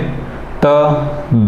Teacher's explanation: त दंत से थोड़ा सा जीभ हमारी टकराती है ऊपर वाले भाग पर, दांत के ऊपर वाले भाग पर टकराती है, तो त वर्ग हमारा दंत उच्चारण स्थान रहेगा।